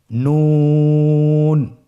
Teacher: নূর হরফটির উচ্চারণ স্থান হচ্ছে জিহ্বার আগা তার বরাবর উপরে তালুর সঙ্গে লাগিয়ে উচ্চারিত হয়।